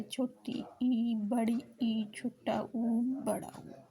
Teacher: फिर आता है संवृत। संवृत में मुख लगभग बंद रहता है